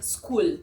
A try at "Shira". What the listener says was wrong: it is sh. How can you pronounce SCH? No, you can't say sk. It's It's sh. Shira. Shira.